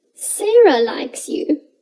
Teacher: can place the stress on sarah and say sarah likes you the question asks who and sarah is the answer to that question so you place the stress on sarah